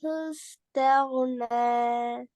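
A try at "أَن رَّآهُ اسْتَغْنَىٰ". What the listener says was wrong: ராக்கு மேல ஃபத்தஹ் மத் இது அப்ப இந்த ராவ நீட்டினீங்க ராக்கு மேல என்ன இது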